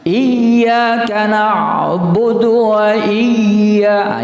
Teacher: Jadi dalam membacanya itu ada penekanan huruf ya yang bertasdid itu.